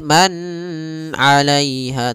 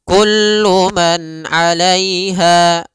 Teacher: Pada lafal kullu man di sini ada izhar halqi, yaitu suara nunnya dibaca dengan jelas ketika bertemu dengan huruf ain